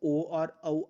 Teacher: अगर हम बात करें कंठ ओष्ठ की तो ओ और औ आपके कंठ ओष्ठ में आते हैं।